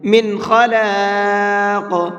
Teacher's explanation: خا کو منہ بھر کے پڑھیں گے اور قاف کو بھی منہ بھر کے پڑھیں گے · اس نون کو صاف صاف پڑھیں گے، جلدی پڑھیں گے، غنہ اخفا یہاں پر نہیں کریں گے، اس لیے کہ نون ساکن کے بعد میں خا ہے اور خا اظہار کے حرفوں میں سے ہے، تو اب یہاں نون کو ظاہر کر کے پڑھیں گے، صاف صاف پڑھیں گے۔